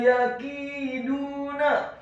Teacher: huruf ya-nya dibaca tipis, tarqiq fathah 1 harokat